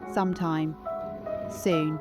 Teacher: The S in sometime should be softened, not a sharp hiss, but a gentle, breathy release. · The U vowel in soon should be slightly elongated and lowered in pitch, almost as if you are musing on the concept of time itself. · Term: aristocratic understatement